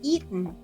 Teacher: También puedes escuchar la pronunciación de este verbo con una T glotal, que se pronunciaría eaten.